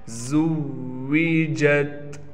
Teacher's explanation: وَإِذَا النُّفُوسُ زُوِّجَتْ، زا کو واو سے ملائیں گے، تشدید ہونے کی وجہ سے واو پر تھوڑا ٹھہراؤ کیا جائے گا۔ زا کو بالکل سختی کے ساتھ نکالیں گے، کہیں زال ہم سے ذال نہ بن جائے۔